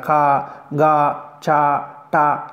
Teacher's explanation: అల్ప ప్రాణాక్షరాలు అంటే తేలికగా పలికేటటువంటి అక్షరాలు.